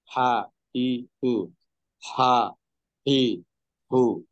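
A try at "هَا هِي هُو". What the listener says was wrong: হা হলো ঠিক হলো, কিন্তু হি, হু এটা ঠিক হয়নি। আ, ই, রু।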